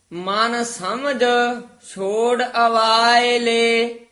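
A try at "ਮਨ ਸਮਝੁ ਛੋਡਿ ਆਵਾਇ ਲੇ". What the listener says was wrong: ਆਵਾਇ ਲੇ ਦੋਵੇਂ ਕੰਨੇ ਲਾ ਕੇ ਉਚਾਰਨ ਕਰਨਾ।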